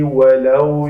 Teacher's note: ولو لام زبر با لو یعنی اس کو واو لین کرتے ہیں, نرمی سے ادا کرتے ہیں